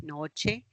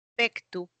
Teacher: los grupos consonánticos, una CT evolucionó a una Ch